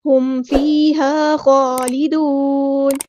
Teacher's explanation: میم ساکن کی آواز پہ ٹائم نہیں دینا، اظہار شفوی ہو رہا ہے